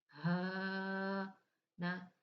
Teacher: इसको हम सीने वाली साइड से यानी कि हलके नीचे वाले हिस्से से अदा करेंगे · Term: मोटा हा